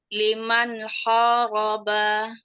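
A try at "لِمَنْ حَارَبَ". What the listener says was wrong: Hati di nunnya ya. Lebih ringan lagi. Liman haroba. Jangan agak tawalut soalnya nunnya. Jadi tadi itu agak lebih tawalut gara entah kenapa.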